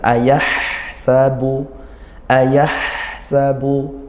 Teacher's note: Kemudian di ayat yang kelima, ayah sabu, hak sukun, nah dia didesiskan ya, nafasnya mengalir dan juga suara juga mengalir